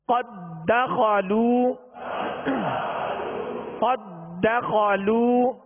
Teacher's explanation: اب یہاں ادغام مثلین تام ہے، یعنی قد داخلوا نہیں پڑھیں گے، دال کو دال میں مکمل داخل کریں گے